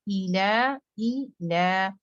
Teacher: ला को दो काउंट और ई हमजा deepest part of throat से